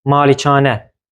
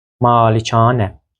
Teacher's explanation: Burada bu sözdə iki səs uzanması var. Birinci hecada, digəri isə üçüncü hecada. Malikanə. Eyni zamanda mömin sözünə də diqqət yetirək.